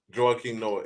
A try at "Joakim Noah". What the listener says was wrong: I hate that you pronounce the A in Joakim Noah's name. Joakim Noah. You just did it because it rhymes.